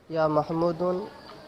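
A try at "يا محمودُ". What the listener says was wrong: ইয়া মাহমুদ, দু এক পেশ হবে, এক পেশ হবে।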